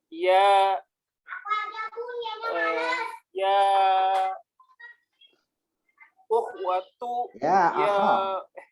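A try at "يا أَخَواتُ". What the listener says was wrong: Kama qultu lakum fi usbu'il madi anna harakatul kha fi lafzi akhwat bil fathah wa laysa sukun.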